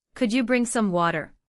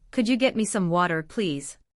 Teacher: You may also notice that could you can sound very connected in natural speech. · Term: connected speech